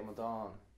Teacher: I'm stressing the final part of the word, the A fada sound.